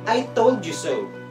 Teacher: The most common way to say this phrase is to put the primary stress on told and the secondary stress on so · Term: sentence stress